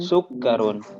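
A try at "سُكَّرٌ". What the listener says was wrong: Kafnya tidak panjang ya. Sekali lagi.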